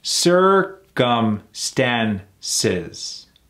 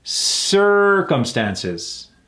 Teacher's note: putting emphasis on the ER